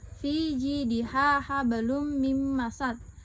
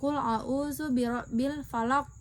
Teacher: Dari ayat tersebut dapat diketahui terdapat huruf kaf yang diwakafkan di akhir kalimat. Cara membaca 2 contoh ayat di atas pada bagian qalqalahnya adalah dengan dipantulkan secara kuat atau qalqalah kubra.